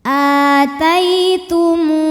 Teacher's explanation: Mu mad tabi'i dhahiri karena ada waw sukun didahului baris dhammah, maka huruf mim panjang 2 harokat.